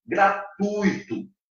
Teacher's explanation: Observem bem que o U é mais forte e o I é fraco. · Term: ditongo decrescente